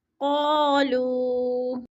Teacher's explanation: لو پہ وہ مدہ ہے، وہ ساکن سے پہلے لام کے اوپر پیش ہے تو وہ مدہ کو بھی ہم نے ایک الف دو حرکات کے برابر لمبا کر کے پڑھنا ہے